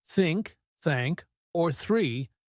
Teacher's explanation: For example, many learners have trouble with the the sound. In words like think, thank or three, the tongue should go slightly between your teeth.